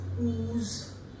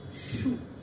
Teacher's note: At the same time, you also know that this is closed lip rounding vowel, but very close to closed position